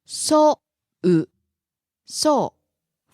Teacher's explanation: Falls on the second syllable u.